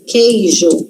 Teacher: A gente não lê u, eu não falo coeijo.